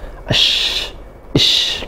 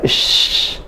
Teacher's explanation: Shin itu seperti asyhadu. Jadi sya keluar dari tengah lidah dan nafasnya menyebar banyak ya. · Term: huruf shin